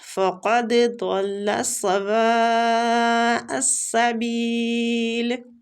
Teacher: مد واجب متصل ہو رہی ہے، وہ کے اوپر جو مد ہے تو اس کو کھینچنے کی جو مقدار ہے وہ 4 حرکات ہے · فقد قاف مستعلیہ حروف ہے، دال ساکن ہے، اس لیے ہم دال پہ قلقلہ کریں گے